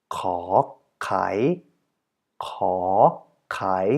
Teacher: And in this particular case, you would pronounce it as ka, kai, so twice a rising tone. Sometimes it helps to actually nod your head a little bit to have it corresponding to the tone you're uttering.